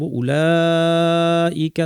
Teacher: এখানে যে মাদটা আছে এ মাদের নাম হচ্ছে মাদ মুত্তাসিল। এর পরিমাণ হচ্ছে দুই আলিফ।